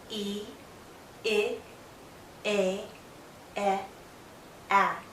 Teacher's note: from E to A, my mouth opens more and more. My jaw lowers, but my lips are still spread out. My tongue is generally still pushed forward with the tip going down to the back of my bottom front teeth. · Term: front vowels